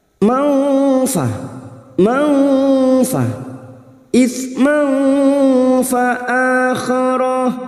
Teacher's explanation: Ini juga yang disebut dengan ikhfa ausat. Kita samarkan bunyi fathah tanwin dan siap membunyikan huruf fa, maka bibir kita siapkan pada makhraj fa sambil mendengung 3 harokat. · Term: ikhfa hakiki